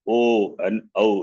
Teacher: O and Au is throat. And it starts with the throat and ends with the lips. O and Au. If you see, you have around your lips the same.